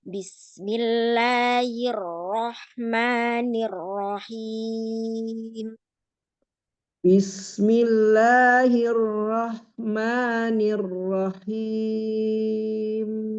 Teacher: Ya sekali lagi rapikan untuk la sama ma-nya panjangnya 2